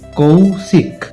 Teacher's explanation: স্পষ্টতই লক্ষ্য করা যাচ্ছে যে শেষের ক টা পুরোপুরি উচ্চারিত হচ্ছে না